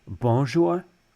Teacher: don't say the n Sound there's none at all so the the fact that that sound doesn't exist in English · So on, for example, in bonjour, there's no N sound at all.